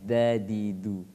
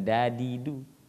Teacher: Iya, dengan pokoknya dengan langit-langit, da, da di du, ya. Tapi kalau orang Arab kalau dal itu ujung lidah dengan pangkal gigi depan